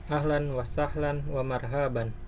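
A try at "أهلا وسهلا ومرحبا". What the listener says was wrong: Wa marhaban, hanya pendek.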